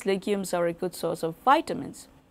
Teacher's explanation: so and whereas we see the small Rises and Falls but towards the end we see a a big rise and a final fall